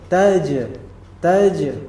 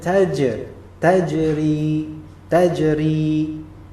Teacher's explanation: perhatikan Jim di sini mati Ya Sukun nah dan kita tahu kalau Jim dia sukun maka dia termasuk huruf Qalqalah maka dipantulkan